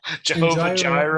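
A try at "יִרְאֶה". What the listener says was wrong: Jireh means yireh. Yireh. Not Jireh, but yireh.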